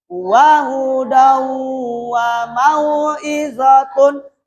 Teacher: Idgham bihunna dibaca dengung.